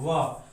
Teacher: तो ऐसा मात्र एक वर्ण है, ये है व। तो व का उच्चारण स्थान में दंत और ओष्ठ दोनों की सहायता होती है, इसलिए इसका नाम बोलेंगे दंतोष्ठ वर्ण।